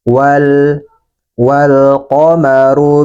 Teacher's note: wal qomaru lam trif berhadapan dengan salah satu huruf qamariah maka lamnya harus kita baca jelas Dan juga sebagian suaranya dialirkan